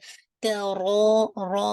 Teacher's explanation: را کو ہیوی کرنا ہے، اور آپ کو انشاءاللہ کیونکہ حمزہ اس کا سبب ہے، حمزہ نیکسٹ ورڈ میں آ رہا ہے. را فل آف ماؤتھ، یہ تکرار نہیں ہوتا